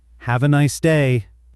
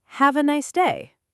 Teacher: once with a flat, bored voice, and once with warmth and a gentle fall.